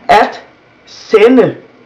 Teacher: Now the word sende has a D in it, but it's not pronounced because it follows an N. So in that way, it just becomes this sound, but not a D sound. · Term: the mute D